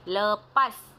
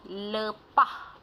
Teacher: digugurkan konsonan geseran gusi tak bersuara huruf S dalam bahasa Melayu standard dan diganti dengan konsonan geseran glotis tak bersuara huruf H bagi dialek Terengganu. Contohnya bahasa Melayu lepas, dialek Terengganu lepah.